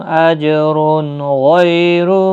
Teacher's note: تنوین کے بعد غائن آیا ہے تو اظہار حلقی ہوگا